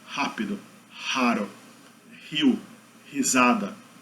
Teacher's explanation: mas geralmente a maioria dos brasileiros pronuncia como fricativa glotal, seria esse H aqui do final, ha.